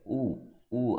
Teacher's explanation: అంటే మన పెదాలు రౌండ్గా వస్తాయన్నమాట. అప్పుడే మనం దీన్ని ప్రొనౌన్స్ చేయగలం. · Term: ఓష్టి